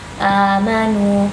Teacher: Jadi, mad badal hanya terdiri dari dua ketukan